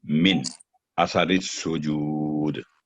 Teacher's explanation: نون ساکن کے ساتھ آگے الف حمزہ ہے، تو نون ساکن پر اظہار کا رول اپلائی ہوگا